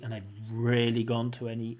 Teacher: so extra stress on really